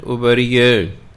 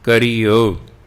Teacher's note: ਕਰਿਓ ਕਿਉਂਕਿ ਰਾਰੇ ਤੋਂ ਬਾਅਦ ਯਈਆ ਹੈ, ਇਸ ਲਈ ਜਿਹੜੀ ਰਾਰੇ ਨੂੰ ਸਿਹਾਰੀ ਲੱਗੀ ਹੈ ਉਹ ਆਵਾਜ਼ ਬਿਹਾਰੀ ਵਰਗੀ ਹੋ ਗਈ।